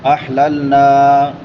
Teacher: احللنا الف مدہ ہے، الف سے پہلے زبر ہے تو الف مدہ کو ایک الف کے برابر لمبا کر کے پڑھتے ہیں.